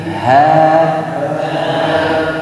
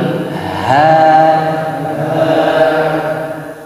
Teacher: Suaranya ngebas, tapi vokalnya tipis.